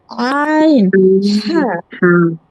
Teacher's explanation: 2 number মাখরাজ কণ্ঠনালীর মধ্যখান হইতে উচ্চারিত হয় আইন, হা। আইন, হা, 3 নাম্বার মাখরাজ কণ্ঠনালীর শেষ ভাগ হইতে উচ্চারিত হয় গইন, হা।